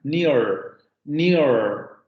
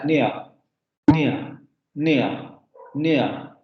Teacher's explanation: Ustedes saben que en palabras como, por ejemplo, que en inglés se pronuncian, o más bien que se escriben near, nosotros ahí tenemos al final una vocal rótica, near, near, La vocal la vocal se pronuncia con esa característica como vibrante, extraña, que a veces a nosotros nos cuesta un poco de trabajo en un principio, pero que se va manejando.